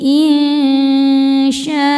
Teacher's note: Cara baca nun sukun ini adalah disamarkan menuju syin kemudian dengungkan. Nah, tingkat kesamaran dan dengungannya sama besar karena syin makhrajnya tengah-tengah ya, tidak terlalu dekat juga tidak terlalu jauh dari nun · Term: ikhfa hakiki ausat